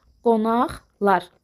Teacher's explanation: Əgər özündən sonra samitlə başlayan şəkilçi işlənərsə, yenə də q, x kimi tələffüz olunur, qonaqlar formasında.